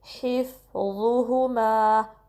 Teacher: 2 count stretch करेंगे और होंठों को सही गोल करेंगे, हिफ्ज़ुहुमा, ज़ा को नरमी से पढ़ेंगे और हैवी पढ़ेंगे